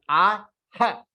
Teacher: When we take a दीर्घ स्वर, यानी अ का बाद आ लेते हैं और आ के साथ जब हम विसर्ग को जोड़ेंगे तो विसर्ग विल बिकम हा, और वो हा को हाफ करना है